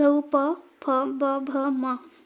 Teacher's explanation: इनको उच्चारण करते समय में हमारे ओष्ठ का उपयोग हो रहा है, इसलिए इन्हें ओष्ठ वर्ण कहते हैं। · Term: ओष वर्ण